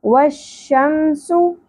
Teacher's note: واؤ کے ساتھ زبر کے ساتھ جوڑنا ہے وش شم سو سین سیٹی کے ساتھ ہوگا پیش کو زیادہ نہیں کھینچنا ایک ہی حرکت ہے